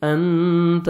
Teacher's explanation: نون ساکن کا اخفا ہے، آگے دیکھیں حروف اخفا میں سے تا ہے، نوز میں ساؤنڈ لے کے جائیں گے